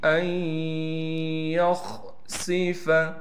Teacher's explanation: ادغام کے قاعدے سے یہ نون ختم ہو جائے گی